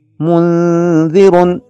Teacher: نون ساکن ہے اور اس کے بعد گزشتہ حروف کے علاوہ ذال آ رہا ہے، لہٰذا یہاں پہ اس طرح کا غنہ ہوگا کہ جسے تجوید کی اصطلاح میں اخفا مع الغنہ کہتے ہیں